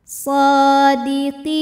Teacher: Cara bacanya, qaf dipanjangkan 2 harokat. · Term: mad tabi'i zahiri